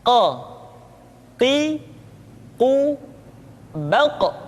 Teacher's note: Berikutnya pengucapan huruf Qa. Huruf Qaf diucapkan dengan cara menyentuhkan pangkal lidah kita dengan langit-langit bagian belakang.